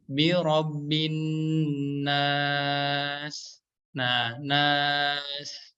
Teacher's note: Ya, jika wakof kan huruf sin di sini berubah menjadi sukun ya teman-teman semuanya ya. Dan huruf sin yang berharokat sukun ini memiliki sifat yang namanya sofir ya, atau sifat sofir